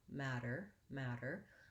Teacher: I want to have a long first syllable and a short, light second syllable, matter, but I still need to have my tight back American R sound there.